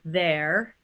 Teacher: if an r sound is at the end of a word like in the word there it's a vowel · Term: vowel of r